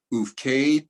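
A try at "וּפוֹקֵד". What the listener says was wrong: Second to last word, try it again. There's a vowel that you missed for the Fe.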